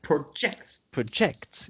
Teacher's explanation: With projects, you have the intonation, emphasis, accentuation on the second syllable, acts, you see.